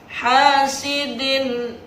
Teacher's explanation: Yang ketiga hasidin, din ada tanwin kasroh bertemu dengan hamzah atau huruf alif, itu dibaca dengan jelas, disebut dengan ijhar halki